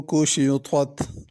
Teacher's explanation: سماء یہاں پہ مد کرنی ہے۔ کشطت، کشطت میں کاف باریک ہے، پہلے طا ہے پھر تا ہے، طا کو پر پڑھنا ہے اور تا کو باریک پڑھنا ہے۔